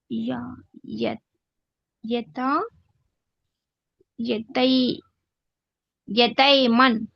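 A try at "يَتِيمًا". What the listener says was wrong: లేదు, కస్రా చూడండి. ఇక్కడ కస్రా యా సుకూన్ వావ్లీన్ కాదు ఇది. ఫథా ఉంటే వావ్లీన్ ఇది. యతీమన్.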